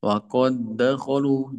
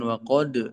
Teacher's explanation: Jadi ini kan huruf qalqalah ya. Karena sama hurufnya, makhrajnya, sifatnya, maka dia dihilangkan ya langsung diidgamkan ke huruf selanjutnya.